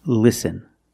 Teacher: the tongue is flat and straight it's not raised in the back it's not expanded at the bottom it's just straight listen and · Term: light L